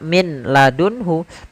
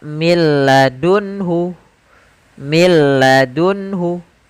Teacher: madunhu tidak dibaca Min ladunhu tapi langsung ke huruf lam karena nunnya dianggap tidak ada dan diidgamkan ke huruf lam maka milladunhu milladunhu langsung saja Kemudian ada beberapa catatan pada idgham